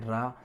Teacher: मुंह से जो हवा निकलती है वो जीभ से कपकपाती हुई बाहर निकल जाती है, वो आपका प्रकंपित व्यंजन है, जिसे कहेंगे रा।